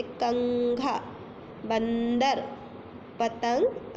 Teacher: इन सबको बोलने में हमारी वायु जो है वो नाक से बाहर आ रही है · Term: अनुस्वार